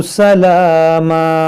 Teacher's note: यहाँ पर जब हम रुकेंगे तो इस दो ज़बर को अलिफ से बदलेंगे। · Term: वक्फ़े मुतलक